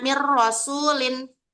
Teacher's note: Nun matinya itu dimasukkan ke bunyi huruf ro dan lam itu tanpa dengung